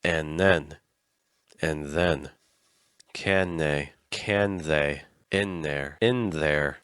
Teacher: sometimes the th sound actually just kind of disappears